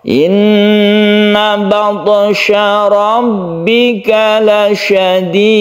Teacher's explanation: Sukun to ini qalqalah, meskipun ada di tengah tetap dikolkolakan yang kita sebut dengan qalqalah sughra.